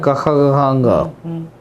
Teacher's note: क ख ग ह और विसर्ग इसका उच्चारण कंठ से होता है